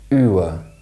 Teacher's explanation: this sound was traditionally pronounced as a centering diphthong which transitioned from U to uh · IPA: /ʊə/